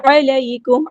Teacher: عین کو وسطی ہے لیکن مڈل تھروٹ سے ادا کرنا ہے